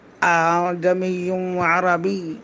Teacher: دوسرے حمزہ کو الف اور حمزہ کے درمیان پڑھیں گے۔ اس کو دوسرے حمزہ کو تسہیل کہتے ہیں۔